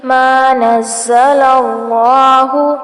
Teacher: زا کو سختی سے پڑھیں گے اور اللہ کا نام جو ہے وہ پر کیا جائے گا کیونکہ اللہ کے نام سے پہلے زبر آ رہی ہے.